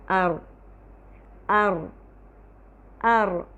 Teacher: اس ہلنے کو یا اس لرزش کو تکرار کہتے ہیں۔ تکرار، ار ار ار، یہ جو رو کی آواز ہے یہ تکرار کہلاتی ہے۔